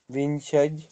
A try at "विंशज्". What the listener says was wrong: ज आधा बोलना है ना, विंशज।